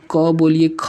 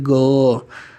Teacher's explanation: तो देखिए क बोलिए ख बोलिए कंपन नहीं उत्पन्न होगा, लेकिन जैसे ही बोलेंगे ग, तो ग बोलेंगे तो क्या होगा, कंपन उत्पन्न होगा स्वर तंत्री में, घ अंगा। तो जो किसी भी वर्ड का जैसे क ख ग लिखते हैं, फिर क ख ग घ अंगा च छ ज झ, तो पहला और दूसरा जो होता है यह अघोष होता है, लेकिन जो पीछे का 3 होता है यह क्या होता है, सघोष होता है।